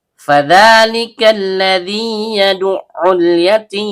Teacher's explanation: Dal ujung lidah bertemu dengan ujung gigi seri atas. · Panjang dua harakat dan setiap panjang keluar dari rongga mulut. Lam ujung lidah bertemu dengan langit-langit bagian depan. · Lam ujung lidah bertemu dengan langit-langit bagian depan. Kaf pangkal lidah naik ke langit-langit di atasnya bertemu dengan alif lam syubbiha bisyamsiyah atau dalam kitab Hidayatur Rahman fi Tajwidil Quran disebut juga dengan alif lam mulhaq bisyamsiyah.